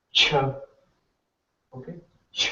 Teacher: it's basically ch plus aspirated sound